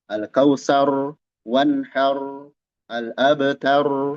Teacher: di ujung-ujung ayat dia ada ro tebal semuanya